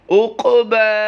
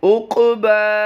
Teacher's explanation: دوسرا لفظ جو آپ اپنی اسکرین پر دیکھ رہے ہیں، عین قاف پیش اوق، قاف کی ادائیگی پور بھی کرنی ہے اور یہاں پر قلقلہ بھی کرنا ہے، یعنی آواز کچھ جنبش دے کر اسے پڑھیں گے